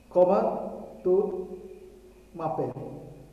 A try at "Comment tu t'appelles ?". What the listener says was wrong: T'appelles. Comment tu t'appelles? Here we have a T.